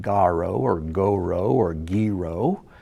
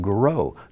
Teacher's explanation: there's no vowel under after the g the g just flows straight into the r